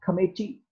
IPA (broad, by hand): kə'miti